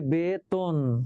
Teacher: এই যে একার, একার থাকার কারণে তটা তো হয়ে গেল, সংবৃত হয়ে গেল